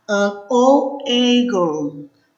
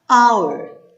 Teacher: Você não escuta o som do H, e sim de uma vogal, ok? E é por isso que a gente, em algumas palavrinhas, vai usar o an antes da letrinha H consoante.